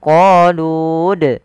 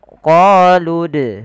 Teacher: Kemudian pada lafal qalu da'u lana, lu-nya tidak dipanjangkan, tidak qalud.